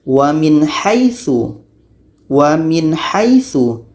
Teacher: Nun harus jelas, ha pun harus jelas dan tidak ada dengung. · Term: izhar halqi